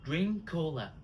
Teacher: We drop the K of drink.